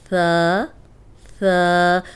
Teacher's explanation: تو ابھی آپ نے پہلا یہ پڑھا ہے نرم حروف ثا, جس کا ادا کرنے کا طریقہ کیا ہے, اوپر سامنے والے جو 2 دانت ہیں ان کے اندرونی کنارے پہ زبان رکھ کے ادا کریں گے تو سیٹی کی آواز نہیں آئے گی